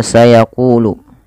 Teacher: pengeditannya kita perhatikan pada lafal sayaquulu pada lafal ada Mad thii ditandai dengan huruf q yang berharakat dah bertemu wau maka panjangnya ku dibaca Dua harakat